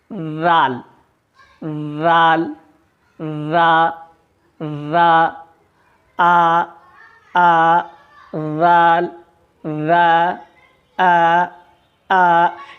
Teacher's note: جب ہم رال کی ادائیگی کرتے ہیں تو ہماری آواز بالکل باریک اور سیدھی نکلتی ہے۔ رال، رال، رال، اس طرح سے رال کی ادائیگی میں آواز نکلتی ہے۔